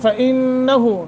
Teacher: نون مشدد ہے، غنہ کریں گے